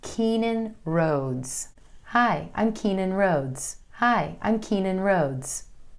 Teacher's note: I make sure the E in Keenyn is a little longer, and then the O in Rhodes is even longer still with more emphasis.